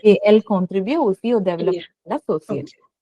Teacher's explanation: Anything that follows et, that t is not pronounced. Et is always a.